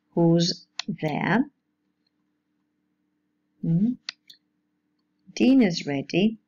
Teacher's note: the verb to be may be reduced to a voiced alveolar fricative sound. Why? When it's preceded by voiced consonants, except these voiced fricative sounds.